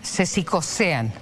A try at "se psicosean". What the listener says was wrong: Porque además dice se psicosean, hay que pronunciar la P. Te salió como...